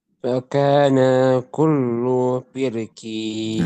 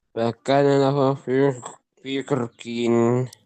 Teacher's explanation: firqin yang pertamanya tipis, firqin yang keduanya tafkhim, dibaca tebal